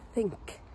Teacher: This is a voiceless fricative, means you don't engage your vocal cords. If you engage your vocal cords, it's the, as in the then. · And in this case, it is a produced by putting the tip of your tongue against your teeth at the front, and that's where the friction comes from. Lingua dental fricative.